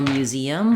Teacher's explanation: we have the same pattern of mu saying the m and the Y Glide um then because we have the stress on that second syllable